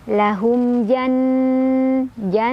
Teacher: izhar syafawi karena ada mim sukun ketemu sama jim, dibacanya mim sukunnya jelas. · gunnah musyaddadah karena ada nun yang bertasydid, dibacanya didengungkan